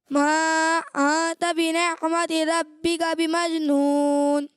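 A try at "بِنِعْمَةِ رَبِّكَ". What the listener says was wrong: اچھی کوشش ہے لیکن آپ کو یہاں نے، یہ آپ کی بھی غلطی ہے. ٹھیک ہے، نے نہیں پڑھنا، بنعمتی پڑھیں.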